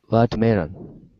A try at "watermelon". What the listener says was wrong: So you want to stress at the very, very beginning. Da da da da.